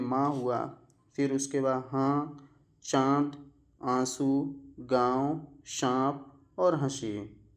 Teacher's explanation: ऐसे स्वर जिसके उच्चारण में मुख के साथ साथ नाक से भी वायु निकले उसे हम लोग जो है अनुनासिक स्वर कहेंगे। ठीक है, और इसमें क्या लगा रहता है, चंद्रबिंदु लगा रहता है। · जब आप इसको बोलेंगे तो आप खुद आपको महसूस होगा कि मुख के साथ साथ जो है नाक से भी जो है वायु निकल रही है